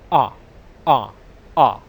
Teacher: my lips are unrounded, they're just open. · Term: short English vowel sound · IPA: /ʌ/